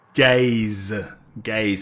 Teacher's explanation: That's my accent, I think. I don't pronounce the vowel.